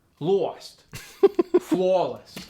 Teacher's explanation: the a sound gets stretched out further to the bottom part of the mouth and it gets like a w in front of it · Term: aw sound